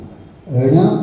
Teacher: ण जो बड़ा होता है ना ण बोलेंगे तो जीभ क्या होती है? उल्टी होकर तालु को दबा देती है।